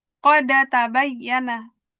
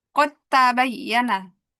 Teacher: huruf dalnya masuk ke dalam tak. Udah terjadi idgham. Jadi dalnya hilang. Kita bacanya kota.